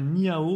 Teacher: donc c'est pas le h aspiré comme en anglais 1 le h se prononce comme air comme d'henri donc un